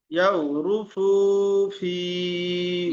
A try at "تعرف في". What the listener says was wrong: ইয়া নয়, তা রয়েছে। তাও তা আইন জবর তাও হয়। তা আইন জবর তা। তারি, তারিফু। তারিফু ফি, ফি টান হবে।